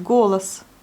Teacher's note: On le prononce bien comme le O. Et la deuxième syllabe, on a encore le O, mais on ne le prononce pas comme le O, mais plutôt comme le A, puisqu'il n'est pas accentué. Donc c'est golas.